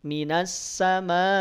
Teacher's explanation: harakat dan ini yang paling penting ketika setelah dipanjangkan mimnya minasama di akhirnya suara direm suara diputus dihentikan bunyinya tidak dihabiskan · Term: mad wajib muttasil